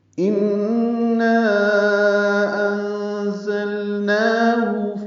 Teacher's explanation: تو انا انزلناہ، اخفا ہے نون ساکن کے بعد زا آنے کی وجہ سے۔ زا کو تیز صفیر کی آواز سے ادا کریں گے، لام ساکن پہ اظہار نون پر کھڑا زبر 2 حرکات لمبا کریں گے، ہا کو جلدی پڑھیں گے۔ · ان میں نون مشدد پہ غنہ ہے اور نا پہ الف مدہ ہے، اس کے بعد حمزہ آنے کی وجہ سے مد منفصل ہے، حمزہ دوسرے کلمے میں ہے۔